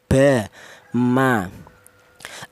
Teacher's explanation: kedua bibir baik bibir atas atau bibir bawah rapat dulu